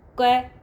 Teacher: इसमें अल्प प्राण यानी कि थोड़ा जोर आ रहा है थोड़ा प्राण लग रहा है